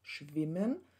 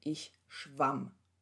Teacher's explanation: Aber der Wurzelvokal ändert sich von i zu a.